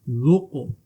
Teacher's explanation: यहाँ हर्फ़ कलकला है और साकिन है, तो कलकला खूब जाहिर होगा, आवाज़ गूंजती हुई निकलेगी